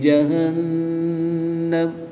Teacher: نون مشدد میں ہمیشہ غنہ ہوتا ہے تو یہاں پر غنہ کریں گے۔ وقف کی حالت میں میم کی زبر کو ساکن کر دیں گے۔